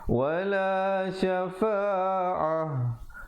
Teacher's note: ta marbutah ataupun ta simpul bila waqaf ditukarkan kepada bunyi ha. Ha simpul, bukan ha pedas ya.